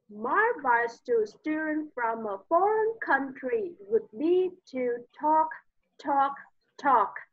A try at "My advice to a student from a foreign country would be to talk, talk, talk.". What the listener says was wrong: Chậm lại xíu đi, đọc nhanh quá. Nhanh.